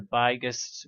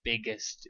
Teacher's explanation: We need this I sound not to be an I, we need it to be a flat I sound.